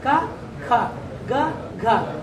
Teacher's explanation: ಅಲ್ಪ ಪ್ರಾಣ ಕಡಿಮೆ ಉಸಿರು ಮಹಾಪ್ರಾಣ ಏನು ಹೆಚ್ಚು ಉಸಿರು